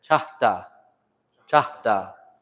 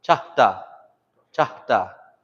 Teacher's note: Have that puff of air come out.